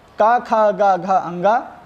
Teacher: का खा गा घा अंगा और हां तथा विसर्ग का उच्चारण स्थान कंठ होता है